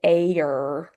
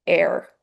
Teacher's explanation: So we don't say I need some aer. It's air. One sound air, not aer. Um it's not two phonemes combining here.